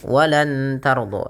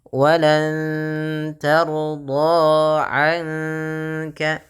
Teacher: nunnya samarkan ke kaf sambil ditahan dengan 2 harakat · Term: ikhfa